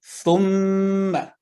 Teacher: دونوں ہونٹوں کے خشک حصے کو قدر دباؤ کے ساتھ ملا کر حرف میم ادا ہوتا ہے